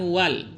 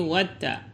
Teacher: Alif lam syamsyah ini dinamakan juga idag samsiah karena pengucapan alif lamnya dileburkan kepada huruf yang setelahnya dan huruf hijaiyah yang berada setelah alif lam ini ditasdidkan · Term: alif lam syamsiyah